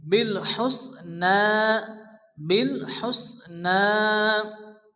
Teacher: নুনের উপরে জবর এক আলিফ টেনে পড়তে হবে